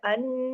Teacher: double नून है तशदीद है पूरा गुन्ने का हक अदा करना है